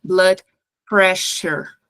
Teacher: Vai ter pequenas variações de acordo com o sotaque das pessoas, mas, no geral, você vai ouvir blood pressure. Aqui, esse SS vai sair igual o fonema X do português. Então, sure, tem que ter esse chiado. Blood pressure, ok?